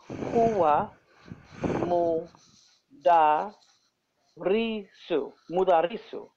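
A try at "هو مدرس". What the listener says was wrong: Yes, huwa mudarisun. Good.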